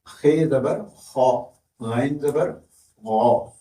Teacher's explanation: ابتدائی حلق سے خ اور غین ہے